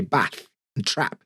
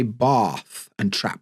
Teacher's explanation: in the North we'll say bath and trap they have the same sound in the South they'll say bath and trap theyve got a long a sound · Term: bath trap split